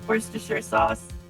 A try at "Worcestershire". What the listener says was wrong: There's no, you don't have to pronounce the R, it's just Worcestershire.